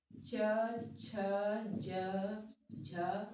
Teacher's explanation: च वर्ग के अक्षर है तालू से बोले जाएंगे